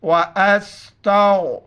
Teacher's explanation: गैन को मोटा पढ़ेंगे और रा को मोटा पढ़ेंगे। रा पर पेश हो या ज़बर हो, रा को मोटा पढ़ेंगे।